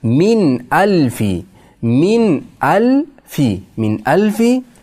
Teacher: sukunlik nun, hamza, undan keyin hamza kelsa aniq qilib o'qilinadi. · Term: izhor